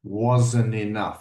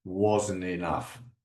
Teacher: I don't even pronounce the T.